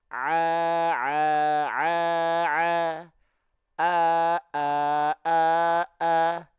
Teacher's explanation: Kalau hamzah di tenggorokan paling bawah, a, a, a, a.